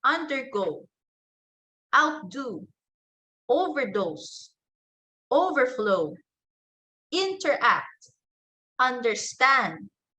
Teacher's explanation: in compound verbs, the stress is placed on the second word.